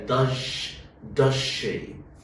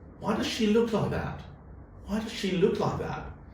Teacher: Because when the z sounds means the sh sounds, this z sound becomes j in connected speech, in faster speech.